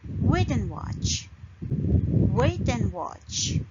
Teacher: We stress on these words and we don't stress on and. We say that quickly. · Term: sentence stress